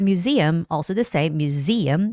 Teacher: And the word museum, also the same, museum, the stress goes on E.